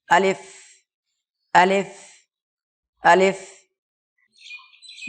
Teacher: আলিফ উচ্চারণ হবে মুখের খালি অংশ থেকে। আলিফ বলার সময় সামনে একটু হাওয়া বার হয়ে যাবে